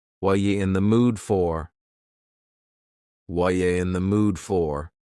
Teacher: The word are is gone, and the word you has been reduced to ya. So when we link together, what and you, super fast. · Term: reduction